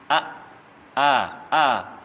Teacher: Hamzah itu pengucapannya dengan pengucapannya tegas karena ketika mati tidak mengalir